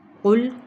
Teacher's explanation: قوف موٹا ادا کرنا ہے، حروف مستعلیہ میں سے بھی ہے، اور ویسے بھی یہ حرف جون سا ہے یعنی قوف حروف قلقلہ میں سے بھی ہے۔